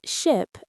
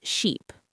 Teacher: You just need to make sure that short I sound is distinct from the long e sound